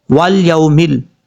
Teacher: واو لام زبر وال، یا واو زبر یو، میم لام زبر میم، لام زیر مل، والیومل، یہاں پر یا کے بعد جو واو ہے یہ واو مدہ نہیں ہے، واو لین ہے، اس کو لمبا کرنے کی ضرورت نہیں ہے